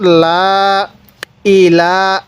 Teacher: তো লামের উপর এই চিহ্নটির নাম হলো খারা জবর আর এই খারা জবর যেই হরফের উপর থাকবে ওই হরফটি আমরা এক আলিফ টান দিয়ে পড়বো